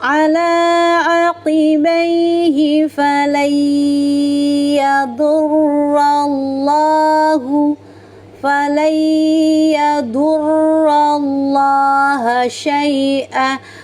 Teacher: lam lafaz Allahnya didahului oleh harokat fathah, maka lamnya dibaca secara tafkim, tebal. Kemudian lamnya dibaca panjang 2 harokat karena huruf lam ini berharokat fathah panjang.